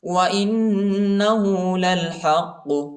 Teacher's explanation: حمزہ کو نون کے ساتھ ملائیں گے اور غنہ کریں گے